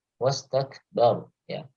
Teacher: kaf sukun di sini memiliki sifat al-hams. Jadi berikan dorongan nafasnya.